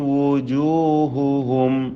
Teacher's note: വാവ് 2 ചുണ്ടുകളാണ് അതിൻ്റെ മഖ്റജ്. പിന്നീടുള്ള എല്ലാ അക്ഷരങ്ങൾക്കും ദമ്മാണ്.